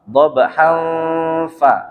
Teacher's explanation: Fa gigi atas bertemu dengan bibir bawah.